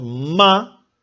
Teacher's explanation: Por ejemplo, cuando nosotros decimos ma, pegamos los labios. No podemos decir ma sin juntar los labios. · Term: bilabial